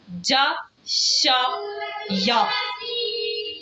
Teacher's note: یہ ادا ہوتے ہیں زبان کی درمیانی حصے اور تالو کے درمیانی حصے کو آپس میں ملانے سے۔ اب دیکھیں اس کے اوپر زبر لگاتے ہیں، جا شا یا، اشارہ باہر کی طرف نہیں ہوا، اس کا مطلب ہے اس میں کوئی بھی حروف موٹی آواز والا نہیں ہے۔